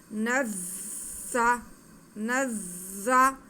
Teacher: ज़ा पे शद है तो थोड़ा रुक के पढ़ेंगे और ज़ा की आवाज़ में सीटी भी आएगी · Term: ज़ा मुशद्दद